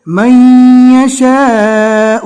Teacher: میم کو ڈائریکٹ یا سے ملانا ہے